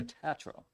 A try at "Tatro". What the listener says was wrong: you're not the only one that mispronounces my name. It actually is pronounced Tatro. Long A.